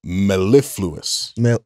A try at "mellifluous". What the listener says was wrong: No. Isn't the second vowel long? That's how we were saying it the first time, I believe.